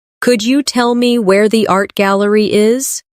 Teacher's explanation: In connected speech, could you becomes could ya.